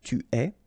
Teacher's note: you get this ES, but then phonetically it's est, alright, quite open